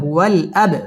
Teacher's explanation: বা কলকলার হরফ ধাক্কা দিয়ে পড়তে হবে